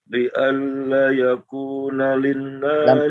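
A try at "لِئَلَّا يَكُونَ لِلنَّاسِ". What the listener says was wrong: Lamnya 2 harakat. Li alla, lamnya 2 harakat.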